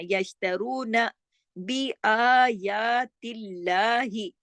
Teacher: دونوں پہ کھڑی زبر ہے، آ اور یا، الف کے برابر کھینچے گا